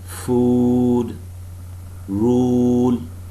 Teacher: the back of the tongue is raised relaxedly from the closest position and is somewhat advanced from the true back its articulation is tensor compared with that of the no form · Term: long vowel sounds